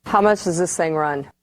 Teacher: There's no D, no TH, no TH.